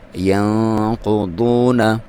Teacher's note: ینقضون، یہاں پہ نون پہ آپ نے اخفا کرنا ہے، ٹھیک ہے، آپ نے ناک میں سے آواز نکالنی ہے اور ایک الف تک اس کی لمبائی 1 سیکنڈ تک اس کو آپ نے ناک میں رکھنا ہے۔ ینقضون، قاف اور ضاد حروف مستعلیہ میں سے ہیں، ان کو موٹا کر کے پڑھنا ہے، قاف کو بھی اور ضاد کو بھی، اور واو یہاں پہ واو مدہ ہے۔